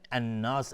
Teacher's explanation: الف لام شمسی است و نون مشدد دو حرکت غنه میدیم